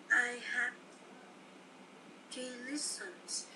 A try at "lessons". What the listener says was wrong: Lessons chứ không phải là listen.